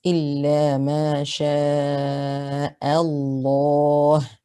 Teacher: Another thing that should be mentioned here, this lam of lafdhul jalala is mufakham. It is heavy because it is preceded by a fatha. So if you listen to the recitation again, you would hear إلا ما شاء الله.